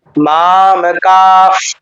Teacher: মা দীর্ঘ, মাম, মটা দীর্ঘ হয়নি কারণ মটা হ্রস্ব